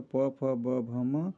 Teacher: प वर्ग देखेंगे तो प फ ब भ म, ये जो है इसका उच्चारण स्थान ओष्ठ से है